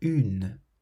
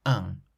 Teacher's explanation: In the pronunciation of the word un, there is a nasal sound at the end